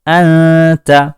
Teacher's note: اسی طرح انت، نون ساکن ہے، اس کے بعد لفظ تا ہے، نون ساکن سے پہلے لفظ حمزہ ہے، نون ساکن ہے لیکن اس نون کی آواز کو واضح نہیں کیا گیا ہے، شو نہیں کیا گیا ہے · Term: اخفا